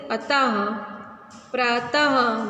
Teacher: विसर्ग का उच्चारण ह की तरह झटके से होता है। जैसे अतः, प्रातः, जल्दी से बोल रहे हैं ना, तो ये इस तरह से इसका उच्चारण होता है विसर्ग का।